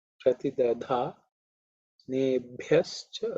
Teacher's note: bha is fourth letter in the pa varga, so it has to be aspirated